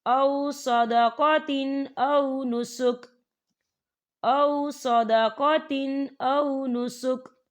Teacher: ففدیۃ من صیام او صدقۃ، یا دیکھیے او صدقۃ، تا کے نیچے تنوین ہے اور تنوین کے بعد حمزہ آ رہا ہے، اور حمزہ جو ہے حروف ہلکی کا ورڈ ہے، تو ہم یہاں پر اظہار کریں گے اور ہم اسے بنا غنے کے پڑھیں گے